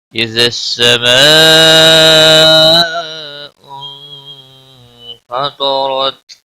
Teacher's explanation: ماء بڑی مد ہے، مد متصل 5 الف کے برابر کھینچ کر پڑھیں گے · طا حروف مستعلیہ میں سے ہے، پور پڑھا جائے گا، اور را زبر کی وجہ سے پور پڑھا جائے گا